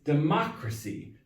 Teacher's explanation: Whereas if it's the noun, the Y, it's democracy. The third to last syllable is stressed.